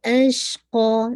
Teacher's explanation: تفشی آواز پھیلے گی